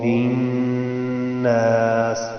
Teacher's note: یہاں ناس میں نون پہ شد ہے تو یہاں پر میں نے غنہ سا کیا ہے، آپ بھی اس کو غنہ کیا کریں۔